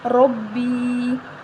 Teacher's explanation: یا مدہ، اس کو بھی ایک الف کے برابر لمبا کریں گے